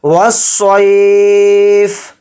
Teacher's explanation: یہاں پر سواد کو موٹا پڑھیں گے، فا کو یہاں پر ساکن کر کے پڑھیں گے کیونکہ یہاں پر آیت ہو رہی ہے.